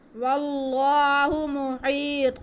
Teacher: طوا کے آواز کو ہم موٹا کر کے پڑھتے ہیں، یہ حروف مستعلیہ ہے، تا اور طوا صرف یہی فرق ہے، تا باریک پڑھا جاتا ہے، طوا موٹا کر کے پڑھا جاتا ہے، مخرج دونوں کا ایک ہی ہے۔